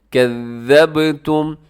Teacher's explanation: یہ زا نہیں ہے بلکہ اسے آپ نے ذال پڑھنا ہے نرمی کے ساتھ سیٹی نہیں ہے